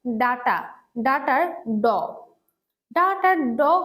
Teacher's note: ড হচ্ছে ঘোষ অল্পপ্রাণ ধ্বনি